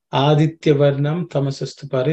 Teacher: there are no aspirated sounds